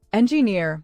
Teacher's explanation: Engineer has stress on the last syllable